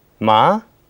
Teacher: The second tone is rising from degree 3 to 5.